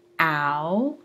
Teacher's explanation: Ow is the same kind of movement from low jaw position to high jaw position, from high F1 to low F1